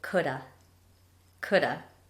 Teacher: So the contraction is could have, but we usually will just say coulda